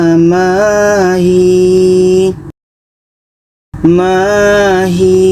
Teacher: ketika berhenti hi ini dibaca panjang. Panjang karena daya mati sebelumnya ada huruf berbars di bawah.